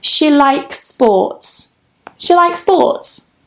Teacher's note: we can join those two S's, so the one at the end of likes and the one at the beginning of sports, so it becomes almost like one sound.